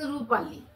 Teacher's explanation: যেমন বলছে রূপালী, রূপা যোগ আলি, রূপা পয়াকারে আকার থাকতেছে, আলির আতে আকার থাকতেছে, কিন্তু যখন আমরা একসাথে রূপালীটা উচ্চারণ করছি, তখন কিন্তু একটা আ লোপ পেয়ে যাচ্ছে।